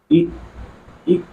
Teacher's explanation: ई जब उच्चरित करेंगे तो अवृत्ताकार बन रहा है, कोई वृत्त नहीं बन रहा है, संवृत्त। ई ई जब उच्चारण कर रहे हैं मुंह पूरी तरह से लगभग बंद सा रह रहा है। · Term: तालव्य स्वर ध्वनि